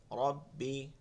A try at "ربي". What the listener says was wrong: না, এখানে টান দেওয়া যাবে না, ঠিক আছে? বলে শোনে রব্বি, এই টানটা দেওয়া যাবে না।